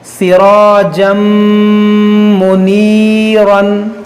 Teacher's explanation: یہاں پر دیکھیے تنوین کے بعد میم ہے حروف یرملون, تو یہاں پر ادغام ہوگا, یعنی تنوین میں جو نون ساکن ہے اس کو میم میں داخل کر دیں گے اور غنہ کریں گے